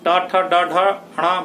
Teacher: ट ठ ड ढ ण बोल के देखो, मुंह के जिस भाग को स्पर्श कर रहा है जीभ, वो मूर्धा है। यानी जीभ के नीचे वाला पार्ट जो है वो तालु है, और जीभ के ऊपर वाला भाग जिससे जीभ स्पर्श हो रही है वो मूर्धा है।